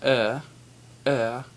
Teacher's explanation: and then there's er er which is not really like er it's kind of like uh but with a slight little r sound i think but you don't roll an r because it's really